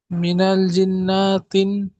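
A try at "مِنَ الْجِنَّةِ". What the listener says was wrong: মিনাল জিন্নাতি, নাতি নাতি পড়েন। না টানবেন না, নুনের উপরে জাবার আছে, জাবারটি হলো হারাকাত, হারাকাতের পরে তাড়াতাড়ি পড়তে হয়, টান দেওয়া নিষেধ।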